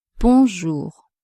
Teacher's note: You don't have to pronounce the N like in an English word. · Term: nasal vowel